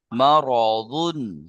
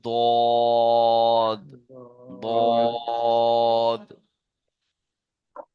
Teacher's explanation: এই দুটির মাঝখান দিয়ে জিভের কিনারা, আমরা পড়েছি দদের মাখরাজ, জিভের কিনারা, জিভের আগা নয়, জিভের কিনারা, দুই সাইড, আর মাড়ির দাঁতের সাথে লাগিয়ে উচ্চারিত হয় দদ।